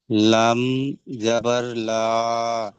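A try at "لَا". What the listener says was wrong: লাম আলিফ জাবারে লা। আলিফ রয়েছে ভাই।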